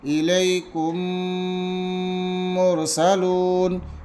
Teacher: ادغام شفوی، یہاں پر ہے ادغام شفوی۔ میم ساکن کے بعد میم آئے تو میم کو میم سے ملا کر غنہ کے ساتھ پڑھا جائے گا